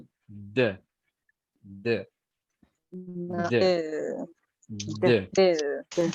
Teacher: Voiced es porque hay una vibración.